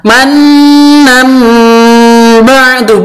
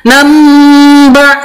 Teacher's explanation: iklab itu menyamarkan bacaan ba atau mengubah sifatnya ba menjadi mim